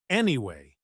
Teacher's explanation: When you hear anyway like this, especially with a slightly falling voice, that is almost always a signal that the speaker is finishing.